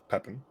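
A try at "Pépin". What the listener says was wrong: No, it's French. It's Pepin. You don't pronounce the N. You don't pronounce the N.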